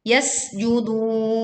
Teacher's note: sin ditekan dengan suara yang tipis, kemudian judun dibaca panjang 2, 4 atau 6 harokat.